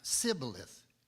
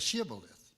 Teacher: an Ephraimite could not say an SH sound, so it would come out Sibboleth instead of Shibboleth